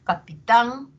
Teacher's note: tan va a tener un tono más alto y va a tener mayor duración y va a tener mayor intensidad no que son las propiedades de la sílaba tónica eh